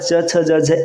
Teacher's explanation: च वर्ग का उच्चारण स्थान होता है तालु